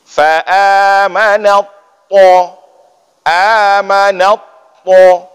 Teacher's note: ketika bertemu ta dengan ta, itu juga langsung dihapuskan ta, langsung masuk ke dalam huruf ta itu.